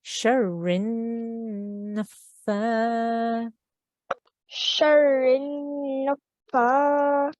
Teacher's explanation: So we hold on that noon for 2 seconds